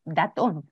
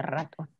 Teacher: sacarlo ya ya sobre todo cuando se sustituye por d porque el punto articulatorio entre la d y la r es muy muy cercano